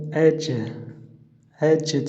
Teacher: сукунды болған кезде бұл жим қалқалы әріп болады. Сондықтан әж деп оқылады.